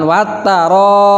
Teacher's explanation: Nah, diganti sukun itu kalau berhenti, tapi kalau dilangsungkan atau diwasolkan jangan disukunkan, tapi harokat kasrohnya itu harus dibawa, diikut sertakan.